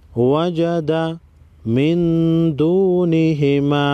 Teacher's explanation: نون ساکن پر غنہ ہوگا یعنی اخفائی حقیقی ہوگا،